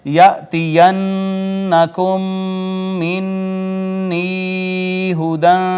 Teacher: یأتین نون مشدد غنہ ہوا میم ساکن کے بعد دوسری میم آئی ادغام ہو گیا. ادغام متماثلین اسے کہتے ہیں ادغام شفوی بھی کہتے ہیں.